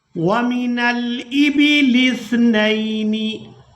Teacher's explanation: यहाँ पर हमने नून को लाम साकिन के साथ और इसके बाद हमजा को अपनी हरकत यानी जेर के साथ अदा करना है।